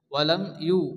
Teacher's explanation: তাড়াতাড়ি করে পড়তে হয়, কোনো গুন্না হবে না। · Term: ইজহারে সাফাবি